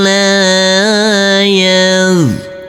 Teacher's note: Huruf nun yang ber sukun ini bertemu dengan huruf ain. Maka huruf nunnya harus kita baca dengan terang atau jelas karena ini adalah bacaan izhar